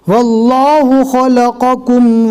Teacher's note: پہلے قوف ہے پھر اس کے بعد کاف ہے، قوف کو پور پڑھنا ہے اور کاف کو نارمل پڑھنا ہے۔